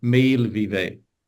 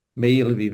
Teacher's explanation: It's 2 syllables, but there's no glottal stop at all in the middle. The vowel sound just changes.